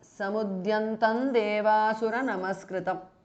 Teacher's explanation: ಅನುಸ್ವಾರ changes to ನ which is ದ nasal ಆರ್ ದಿ ಅನುನಾಸಿಕ of ದ ತ ವರ್ಗ · Now samudyantam ends with an anuswara, a dot on top of the ta, which has the sound of m, and devasura namaskritam starts with the, which is a part of the ta varga. So this anuswara changes to n, which is the nasal or the anunasika of the ta varga.